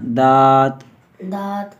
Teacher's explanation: دال کو موٹا نہیں، دود نہیں پڑھنا